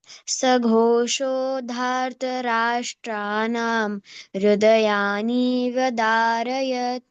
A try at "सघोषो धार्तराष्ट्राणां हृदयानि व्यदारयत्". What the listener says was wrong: No, हृदयानि immediately you should not split that. हृदयानि व्यदारयत् no. हृदयानि व्यदारयत्